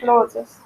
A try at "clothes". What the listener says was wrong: No, not clothes. Clothes. One syllable.